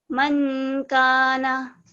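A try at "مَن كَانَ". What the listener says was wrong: नून को पूरा नहीं पढ़ते, मन नहीं पढ़ना हमने, ठीक है?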